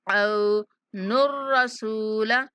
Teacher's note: आइन के बाद वाव लीन है। औ औ वाली आवाज आएगी।